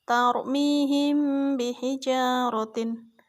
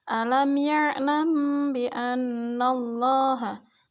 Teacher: Ikhfa syafawi adalah apabila ada mim sukun berhadapan dengan huruf ba, maka cara membacanya yaitu dengan suara samar antara mim dan ba pada bibir, kemudian ditahan 2 harokat seraya mengeluarkan suara ikhfa dari pangkal hidung